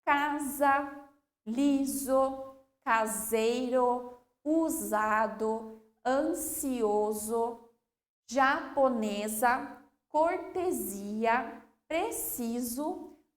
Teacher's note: o s quando a gente pronuncia eles tem som de z